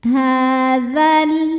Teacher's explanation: Sukun bertemu sukun tidak bisa dibaca sehingga sukun pertama dilepaskan. Sehingga kalau dzal fathah nggak ada alifnya jadi pendek.